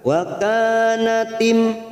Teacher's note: Wa kanatim masuk kata huruf mim sukun, tim, mim sukun bertemu ra, idhar safawi kita baca jelas tanpa mendengung.